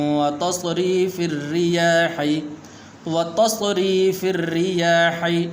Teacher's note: یہاں پر را ہے اس کے نیچے زیر ہے تو اس لیے اس کو باریک کر کے پڑھیں گے